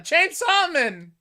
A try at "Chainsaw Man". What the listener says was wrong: Why are you saying it like his name is Chain Seaman?